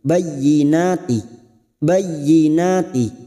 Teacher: huruf ya yang bertasdid hanya masuk tanpa ditahan lama-lama tanpa mendengung